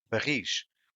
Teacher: the stress is in ris